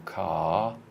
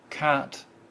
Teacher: car, which is a double length, not as in cat, which is single length